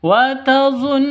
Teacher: gunnah musyaddadah, dengung 2 ketukan. Wa tazunnuna, panjang 2 ketukan karena ada waw mati diawali dengan dhammah.